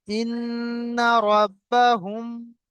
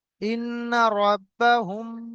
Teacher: মিম সাকিনের পরে যদি বা আসে তাহলে মিম সাকিনকে একালি পরিমাণ গুণনা করে পড়ব। যেমন ইবহুম এক আলিফ পরিমাণ গুণনা করব।